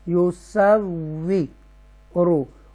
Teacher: صورو یہ واو مدہ ہے، واو تشدید کے ساتھ ہے، مشدہ ہے، واو مشدہ ہے اور ایکسٹرا سٹریس کے ساتھ اس کو پڑھیں گے ٹوائس ٹائم